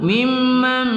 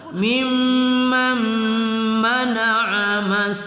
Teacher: nun sukun bertemu mim kita baca berdengung pada idgham ma'al gunah